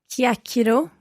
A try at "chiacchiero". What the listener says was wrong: What's your stress there? Where's the stress? It's at the start.